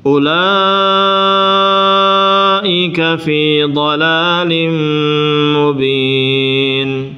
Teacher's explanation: Harus pegang ini u-nya ini bukan sukun ya, wawu-nya bukan disukun, tapi dia sifat mustadir, dianggap tidak ada hurufnya, jadi dibaca pendek.